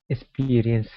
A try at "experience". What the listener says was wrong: give me a good R sound experience